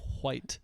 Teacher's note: He uses an H before saying white, so he actually says white.